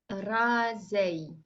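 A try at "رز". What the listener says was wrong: Alors, sans prononcer le Zay, puisque le Zay c'est son nom, mais juste le Z. Raza.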